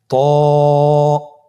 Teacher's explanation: জিহ্বার আগা সামনের উপরের দুই দাঁতের গোড়ার সঙ্গে লাগিয়ে উচ্চারিত হয় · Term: মাখরাজ